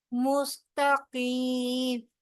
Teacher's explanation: سین سیٹی کے ساتھ ادائیگی ہوگی، تا کو تیزی سے ادا کریں گے. قاف جو ہے وہ موٹے حروف میں سے ہے، اس کے آگے یائے مدہ آ رہی ہے، لہٰذا دو حرف برابر لمبا کیا جائے گا.